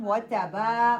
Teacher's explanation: با کو لمبا کرنا ہے، تا کو لمبا نہیں کرنا